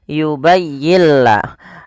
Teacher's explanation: nun mati bertemu lam suara nunnya kita hilangkan dan kita masukkan langsung kepada huruf lamnya sehingga yubayilla dan lam di sini dituliskan dengan tanda tasdid karena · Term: idgham